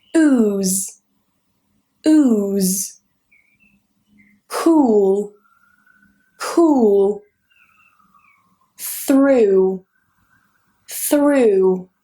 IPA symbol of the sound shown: uː